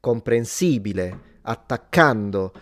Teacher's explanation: we tend to stress not the final vowel, the one before.